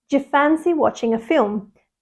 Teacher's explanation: we contract do you and it sounds more like J